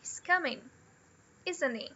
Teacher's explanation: a primeira parte, ela tem a entonação da statement, ok? O up and down.